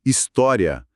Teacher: na fala, muitas vezes, a gente pronuncia como se fossem 3 sílabas, história, e aí ela soa como uma proparoxítona, por isso o apelido de aparente. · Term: proparoxítonas aparentes